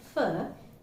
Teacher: why it's called labiodental in order to articulate the sound fur the upper teeth is pressed on the lower lips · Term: labiodental fricative